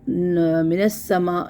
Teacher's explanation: سین یہاں پہ دو بار ادا ہوگا، ایک بار نون کے ساتھ، ایک بار اپنی حرکت کے ساتھ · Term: مشدد